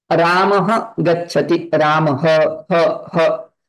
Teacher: when you pronounce ha that time visarga is coming through our kantha